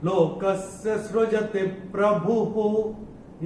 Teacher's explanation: अभी ये भ पे जो विसर्ग आ रहा है चरण की समाप्ति पे आ रहा है, तो इसका उच्चारण केवल और केवल ह ही होगा।